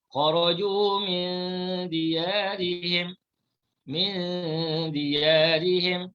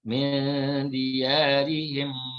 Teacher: Bila kita letakkan lidah dekat langit-langit, kita dapatkan, kita tempelkan kuat-kuat lidah kita dekat langit-langit, maka tak jadi ikhfa. Ikhfa ni lidah tak bercantum, tak menempel ke langit-langit. Sebab itu dibaca secara samar-samar ataupun dibaca secara tidak jelas. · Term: ikhfa hakiki